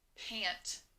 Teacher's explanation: when i said the word pant i did not hear the letter a i only heard ah which is short a